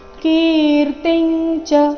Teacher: ಕೀರ್ತಿ ನಂತರ ಬಂದ ಅನುಸ್ವಾರದ ಉಚ್ಚಾರಣೆ ಚ ವರ್ಗದ ಅನುನಾಸಿಕದ ರೀತಿ ಮುಂದೆ ಚ ಬಂದ ಕಾರಣ